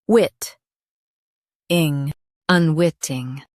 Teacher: Stress wit and keep ing light.